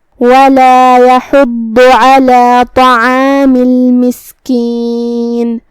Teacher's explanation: کلمت طعام یہاں حرف الطا ہے. طا حروف تفخیم میں سے ہے تو ہمیں اسے موٹی آواز میں پڑھنا ہے